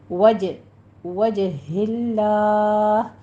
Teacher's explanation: کریں گے، 5 کاؤنٹ کرنا ہے، وج نہیں کہنا، وجہ اللہ جیم کے پر قلقلہ کریں گے ، اور لفظ جلالہ کو ہم نے باریک پڑھنا